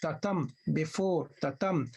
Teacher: The second syllable should receive the stress, the accent. This is what we call accentual rhythm. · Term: iambic